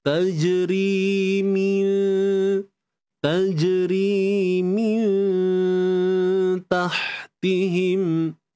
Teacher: Min, nun mati jumpa ta, ikhfa haqiqi. Sembunyikan nun di sisi huruf ta. Huruf ta nipis, maka dengung pun nipis.